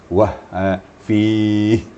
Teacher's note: Dia harus ada getaran pada pangkal tenggorokan.